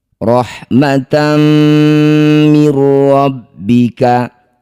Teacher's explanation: Masukkan bunyi fathah tanwin pada mim. Dengungkan dua harakat. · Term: idgham bigunah, idgham bi gunnah